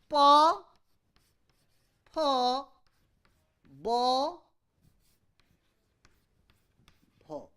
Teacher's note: Unvoiced, unaspirated, unvoiced, aspirated, voiced, unaspirated, voiced, aspirated, bilabial, labial.